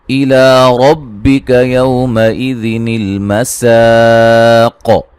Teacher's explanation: لا مد اصلی ہے، را کو موٹا ادا کریں گے، یو اولین ہے، مَئِذٍ.